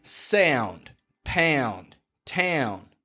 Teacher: You see, when I say a word like sound, pound, town, I'm making this transition from the OU or OW position, ow, to an N. And it sounds like a-own, a-own.